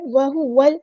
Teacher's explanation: واؤ کو ہم نے لام کے ساتھ ملا دینا ہے، حمزۃ الوصل ہمارا ڈراپ ہو جائے گا